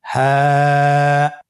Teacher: হ্যাঁ হরফটি উচ্চারণ ক্ষেত্রে অবশ্যই বারিক হবে এবং 1 আলিফ টেনে পড়তে হবে।